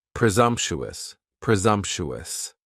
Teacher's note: presumptuous has four syllables. And the stress is on that second syllable. And the S almost sounds a little more like a Z.